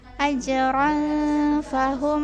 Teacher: Ini ikhfa, tanwin bertemu fa, ikhfa, jadi samar-samar terbacanya ya.